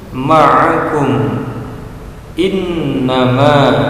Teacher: Ma'akum, innama, mim sukun bertemu dengan alif juga disebut idhar safawi, karena kita harus membacanya jelas, tidak mendengung dan pendek. Karena di depan mim yang disukun ini bukan huruf mim dan bukan juga huruf ba.